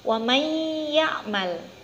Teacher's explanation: cara membacanya harus dimasukkan nun sukun nya bunyinya masuk ke huruf selanjutnya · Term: Idgham Bighunnah